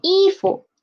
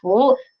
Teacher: For this character, when it is used alone, it is a second tone, 服, close. But when it is inside 衣 服, this word, it is a neutral tone